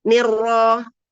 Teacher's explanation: nnya tipis rnya tebal